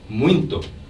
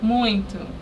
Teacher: they will say oo every time there's a final and unstressed O in the word.